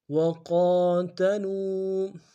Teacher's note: قاف کے اوپر کھڑا زبر ہے، ایک دال میں کھینچیں گے، قاف کو موٹا ادا کریں گے، لام کو واو کے ساتھ ملانا ہے، واو مدہ ایک دال میں کھینچیں گے۔